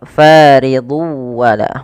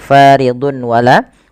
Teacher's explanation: tapi tanwinnya masuk ke waw dan ini kita baca dengan bacaan idgham bi gunnah. Nah, ini sedikit berbeda dengan idgham bila gunnah.